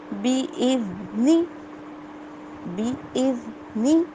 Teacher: زال کی آواز نکالتے ہوئے ہماری زبان کی ٹپ آگے کے 2 دانتوں کو ٹچ کرے گی